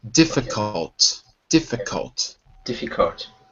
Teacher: one little pronunciation issue which is the L in difficult we don't say it it's silent